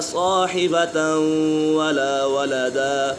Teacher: تنوین کے بعد حروف یرملون میں سے واو آ گئی ہے تو یہاں ادغام یرملون ہوگا، یعنی غنہ کر کے پڑھیں گے